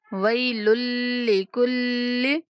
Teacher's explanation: دونوں لام مشدد ہیں تو دونوں سختی سے پڑھیں گے